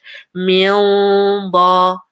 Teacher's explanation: this is a noon that's naked, and after is a ba, which is a heavy letter. So you hear the heaviness as you merge. Min ba, and your mouth is ready for the ba.